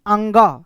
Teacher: चंद्र बिंदु, कहने का मतलब अंग वाला जितने होगा ना वो सब नाक मुंह से बोला जाएगा। अंग वाले जो भी चीज होंगे वो किस चीज से बोला जाएगा? तो नाक मुंह दोनों से बोलेंगे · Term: अनुनासिक